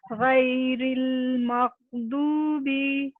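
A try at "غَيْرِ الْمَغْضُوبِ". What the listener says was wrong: اچھا غین کی آواز آنی چاہیے. غین کا جو اس کو چاپ آف کریں گے مطلب مغو.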